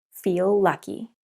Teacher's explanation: the two words share the L Sound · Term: link